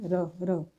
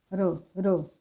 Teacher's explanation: र की अगर बात करें, र का उच्चारण करके देखें, र र, थोड़ा कंपन सा करती है जीभ, जीभ कंपन सा करती है और लुढ़कती है, र र। तो ये इसलिए ये कहलाता है प्रकंपित व्यंजन या फिर लुंढित व्यंजन।